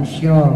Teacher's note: Kalau syo shin, bagian tengah-tengah lidah itu ke bawah.